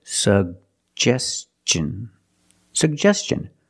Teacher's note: Tin the T makes the CH sound so together suggestion suggestion put stress on the second syllable · Put the stress on the second syllable.